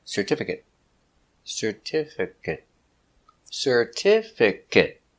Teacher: 4 syllables, stress the second syllable.